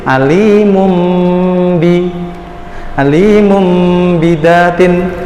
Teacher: nun sukun atau tanwin maksudnya bertemu dengan huruf ba, maka dia dibaca dengan iklab, mengganti huruf nunnya menjadi huruf mim.